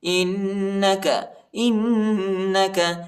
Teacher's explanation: حمزہ کو نون کے ساتھ ملائیں گے اور غنہ کریں گے